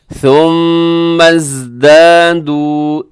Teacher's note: ثم یہاں میم مشدد پہ غنہ ہوگا اور آگے زا ہے۔